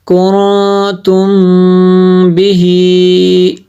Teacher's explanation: میم ساکن کے بعد حرف با آ جائے تو میم ساکن میں اخفاء شفوی ہوگا، یعنی اس میں بھی غنہ کریں گے · کون پہ میں نے غنہ کیا اس لیے کہ یہاں پہ اخفا ہوگا، نون ساکن کے بعد تا حروف اخفا میں سے ہے۔